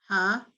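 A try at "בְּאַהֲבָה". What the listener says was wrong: No, it's an aleph. Ahava.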